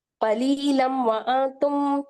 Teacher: میم مشدد ہے یہاں پہ، غنہ کریں گے اور میم کی آواز کو روک لیں گے، تشدید کی طرح زور دیں گے